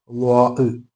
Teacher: ളാ പറയുമ്പോൾ അല്പം നാവ് വളച്ചുകൊണ്ട് വായ നിറയെ ശബ്ദം ഉണ്ടാകുന്ന രൂപത്തിലാണ് ളാഹ് പറയേണ്ടത് · വരുന്ന രൂപത്തിലാണ് ത്വ പറയാറുള്ളത് ഓക്കേ അടുത്തതാണ് ളാ എന്നുള്ളത് എന്നാണ് അതിന്റെ ഉച്ചാരണം ളാിന്റെ മഹ്റജ് നാവിന്റെ തലയും മുൻപല്ലിന്റെ തലയുമാണ് മുമപൽ മേലെ മുൻപലിനെ തലയിൽ ക്കാ എന്നാണ് പറയുക ളാ ഓക്കേ ഇതേ സ്ഥാനം